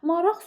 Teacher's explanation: Maraq sözü x kimi tələffüz olunacaq. Çünki söz sonunda qı kimi tələffüz olunur.